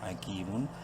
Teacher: کاف یا زیر کی، یا مدہ ہے، کاف کو ایک الف کے برابر لمبا کریں گے. حکیم میم دو پیش من، حکیمن.